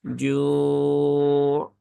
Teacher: pastikan dia yang berperan adalah tengah lidah langit-langit atas. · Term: jim